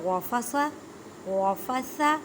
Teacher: سا کو نرمی سے ادا کریں، زبان کے درمیان اوپر کے دانتوں کے کنارے سے ادا ہوتا ہے، سا نرمی والا حرف ہے۔